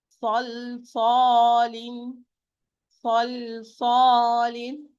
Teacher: Sad is a full mouth, okay? While the lam, it is an empty mouth. And it's located between two heavy sounds, two sods.